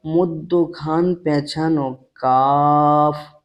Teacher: জীবের গোড়া হইতে একটু আগে বাড়িয়ে তার বরাবর উপরের তালুর সাথে লাগিয়ে উচ্চারিত হয়